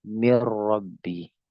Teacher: Ini yang disebut dengan idgham kamil. Sempurna masuknya kepada huruf yang kedua sampai-sampai tidak terbaca dan memang tidak terbaca. · Ketika dia idgham kamil maka nunnya melebur ke huruf ro mirrabbi. Paham?